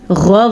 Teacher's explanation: یہ غین بھی حروف مستعلیہ میں سے ہے، تو اس غین کو بھی ہم پر پڑھیں گے